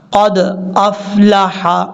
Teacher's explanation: یہاں پر دال میں قلقلہ کرنا ہے کیونکہ حروف قلقلہ میں سے ہے